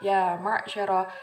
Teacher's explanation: ya-nya di situ kita baca 2 ketuk, karena di situ dia masuk ke dalam bacaan mat tabi'i, fathah diikuti oleh alif.